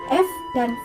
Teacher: bunyinya dihasilkan oleh keterlibatan bibir bawah dengan gigi atas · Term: bunyi labiodental